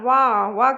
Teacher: व क्या होता है दंतोष्ठ होता है व क्या होता है व दंतोष् होता है ये भी क्वेश्चन